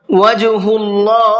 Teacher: اللہ کے لام سے پہلے پیش ہے تو اللہ کے لام کو پر کر کے پڑھیں گے